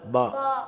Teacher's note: உதட்டுடைய ஈரமான மேல் உதட்டு, மேல் கீழ் உதட்டில் உள்ள ஈரமான பகுதி ஒன்றா சேரும்போது பா ஏற்படுது.